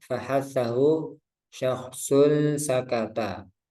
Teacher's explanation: Hamas adalah samarnya suara pada pendengaran disebabkan terbukanya dua pita suara atau vokal cor. dan tidak adanya getaran pada keduanya serta banyaknya udara yang mengalir ketika mengucapkan hurufnya. Huruf haas berjumlah 10 yang terkumpul dalam lafaz fahatahu syaksun sakata. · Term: Hames